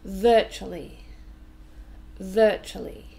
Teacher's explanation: Just three syllables, and we stress the first one.